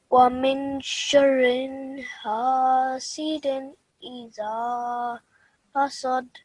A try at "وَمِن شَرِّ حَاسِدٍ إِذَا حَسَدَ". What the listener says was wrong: You said sharrin instead of sharri. The ra only has a kasra underneath it. The other thing is, at the end, after dal, we are doing waqf. We're pausing, right?